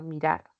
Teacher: Cuando yo separo mirar, pues recae en la última sílaba la mayor fuerza de voz. Acá mirar, no digo mirar, sino mirar. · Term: aguda